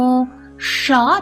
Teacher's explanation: ஷ ரெட்ரோபிளக்ஸ் ஷ நாக்க மடிச்சு உச்சரிக்கணும்